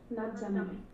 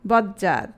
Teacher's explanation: তটা vanish হয়ে যাবে, জটা ডাবল হবে